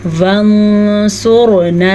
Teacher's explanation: صبرا وثبت اقدامنا، قلقلہ، اقدامنا وانصرنا، نون ساکن کے بعد سواد ہے تو نون ساکن کو ہم چھپا کے پڑھیں گے. را کو پر پڑھیں گے، را ساکن سے پیچھے والے حرف پہ پیش کی وجہ سے